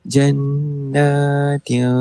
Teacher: Nun tu ada mad tabii. Dibaca dengan kadar dua harakat.